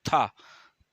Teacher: दांत से बोला जाता है, महाप्राण भी हो, घोष भी है, स्पर्श भी है।